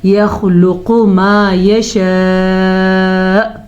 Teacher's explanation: يخلق خا پر اور اس کے ساتھ ساتھ قاف بھی پر پڑھی جائے گی کیونکہ خا اور قاف دونوں حروف مستعلیہ میں شامل ہیں